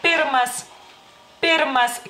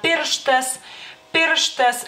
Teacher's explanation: Es una consonante sorda, bilabial y oclusiva. Y digamos que es como la compañera, porque en lituano así las ponemos en un grupo, digamos así, la compañera sorda de la consonante B, que es sonora.